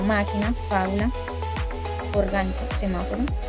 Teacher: Las palabras esdrújulas tienen el acento en la antepenúltima sílaba y siempre se tildan.